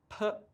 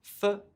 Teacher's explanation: P, for example, uses your lips, and f, for example, uses your top teeth on your bottom lip.